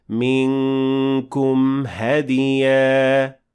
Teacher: And at the end of it this time, we have إظهار, since the meme at the end of منكم will have to be shown, since after it directly we have the letter ha.